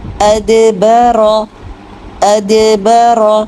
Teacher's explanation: دال میں قلقلہ کیجیے، رو موٹا کیجیے